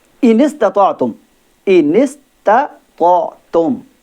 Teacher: سین حروف صفیری میں سے اس کو ادا کرتے وقت سیٹی کی آواز کو ہونا ضروری ہے